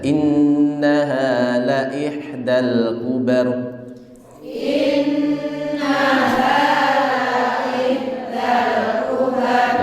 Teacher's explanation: innaha hanya ha dibaca 2 ketukan saja